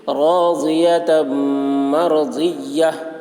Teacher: راضیۃ مرضیہ، یا کے بعد گولتا ہے، گولتا پر، گولتا کو حالت وقف میں ہائے ساکنہ سے بدل کر پڑھیں گے